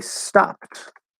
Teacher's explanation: p is voiceless so that d will be a t and the e is silent